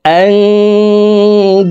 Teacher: হরফের একটি হরফ ওয়াও আসছে এই কারণে উক্ত তানউইনওয়ালা দালটি অর্থাৎ দুই জবরওয়ালা দালকে তাসদিদওয়ালা ওয়ার সাথে গুন্নার সহিত মিলাইয়া পড়তে হবে তো দেখুন শব্দটি এভাবে পড়ব আনদাদাও فلا تجعلوا لله أندادا وأنتم